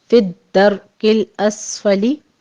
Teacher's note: سین کے اوپر سیٹی کے آواز کے ساتھ ہمس ہوگا